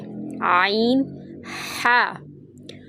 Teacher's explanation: وسط حلق درمیان کا حصہ، یہاں سے عین اور ہا ادا ہوتا ہے